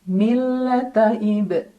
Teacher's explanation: ada qalqalah sugro karena ada huruf qalqalah yaitu ba yang sukunnya sukun asli, maka dibacanya dengan pantulan yang kecil.